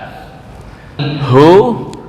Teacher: Hu itu makhrajnya di sini dekat dengan dada. Tenggorokan paling bawah dekat dengan dada. Saya enggak tahu ini ujung atau pangkal yang penting dekat dengan dada.